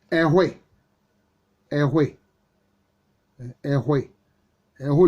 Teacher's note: Ehwe avec le H en Agni, qui est allophone du K du Twi